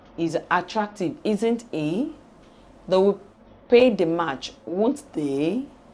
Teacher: These utterances are uttered with the falling and rising tunes combined.